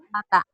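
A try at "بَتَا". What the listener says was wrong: Bukan nata. Titiknya di bawah. Bata.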